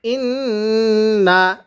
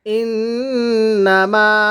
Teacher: এরপরে হামজা নুন জের ইন, নুন জবর না, ইন না, নুনের যদি তাজদিদ হয় গুন্নাহ করে পড়তে হয়